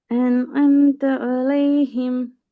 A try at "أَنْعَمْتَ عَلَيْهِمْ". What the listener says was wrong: வரலையே. வரப்படாது. ஏன்னு சவுண்ட் வருது. வரப்படாது. அன்அம்த அலைஹிம்.